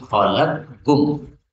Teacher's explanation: Boleh dibaca idgham menjadi khalaqkum. Jadi qafnya hilang menjadi kaf.